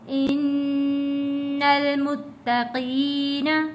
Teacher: ان المتقین، نون کے اوپر تشدید ہے، یہاں پہ آگے لام کے اوپر جزم ہے، نون کو ہم ملائیں گے لام کے ساتھ